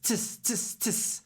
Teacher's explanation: Participants, participants, participants, tis, tis, tis. Not a lot of vowel, more consonant, more aspiration to give the stress.